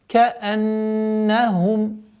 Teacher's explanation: Удержание назализации в размере двух огласовок буквы нун.